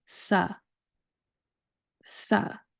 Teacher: we're going to start with the S sound, and then we're going to put in that schwa vowel sound, that U vowel sound.